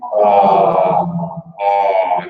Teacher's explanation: a nice rounded mouth moving further back